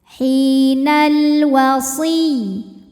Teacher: Kemudian ada hukum alif lam qamariyah. Sebab alif lam menghadapi huruf qamariyah yaitu waw, maka lam sukun dibaca jelas.